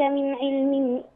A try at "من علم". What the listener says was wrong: ما ينفعش تقفي على علم بالتنوين، لا قفي بالسكون، من علم.